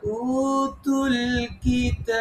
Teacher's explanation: বাতে সাকিন দেব তখন বাতে কলকলা হবে আর কিতাবের তাতে তিন আলিফ মা হবে উততুল কিতাব তুল কিতাবা